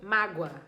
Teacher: Você me causou muita mágoa. Esse mágoa é escrito com O, mas o som é de U. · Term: semivogal